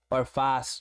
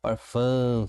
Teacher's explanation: O som sai das fossas nasais. Ele é um sinal de nasalação da vogal, tá bom?